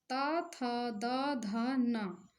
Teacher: तो देखिए यहाँ पर हमारी जो जीवा है दंत पर स्पर्श कर रही है, तो ये दंत उच्चारण स्थान के हुए। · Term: त वर्ग, ता वर्ग